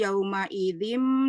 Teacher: nun sukun bertemu dengan huruf ba ee dibaca iqlab dengan tingkatan gunahnya kamilah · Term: iklab